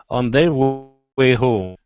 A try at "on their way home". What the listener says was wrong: Okay, so not on their way, it's on their way home. Ba-da-da-dum, coming down the whole time. On their way home.